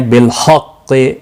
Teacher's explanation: بالحق وقف کی صورت میں اگر یہاں پر وقف اب نہیں کرنا ہوگا تو خاص قاف ساکن پڑھیں گے شدت کے ساتھ، اس پر قلقلہ بھی ہوگا، تو یہاں پر رکنے کی کوئی صورت نہیں ہے. بالحق تشدید کو سختی کے ساتھ پڑھیں تاکہ تشدید ظاہر ہو، قاف مستعلیہ بھی ہے، پر پڑھا جائے گا